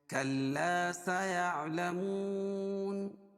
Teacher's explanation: کاف کو لام میں تھوڑی سی سختی کے ساتھ ملائیں کیونکہ لام پر تشدید ہے، اور یہ الف سے پہلے زبر ہے اس لیے الف مدہ بھی ہوگا.